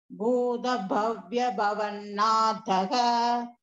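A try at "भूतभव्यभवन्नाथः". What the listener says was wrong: Ella mahaprana stress pandringla Bhagini. Nathaha.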